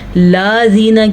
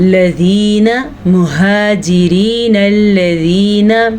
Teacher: نون کو لام کے ساتھ اس لیے جوڑیں گے کیونکہ لام کے اوپر شد ہے